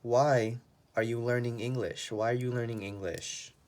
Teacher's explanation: if it's the five W's here your voice goes down